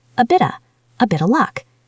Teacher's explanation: Listen to how that T at the end of bit might even become a soft D or a glottal stop.